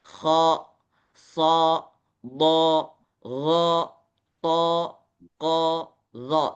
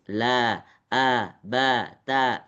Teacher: Kalau huruf tebal itu action-nya itu jadi seperti O.